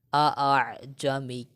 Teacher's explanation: تسہیل کے معنی ہے نرمی کرنا، اور یہاں مراد یہ ہے کہ دوسرے حمزہ کو نرم کر کے خود حمزہ کے اور الف کے مخرج کے درمیان ادا کرنا، ٹھیک ہے. اس کلمے میں تسہیل ضروری ہے.